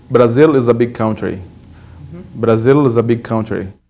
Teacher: we worked with him on not rounding his lips and linking the L to the next word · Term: final L sounds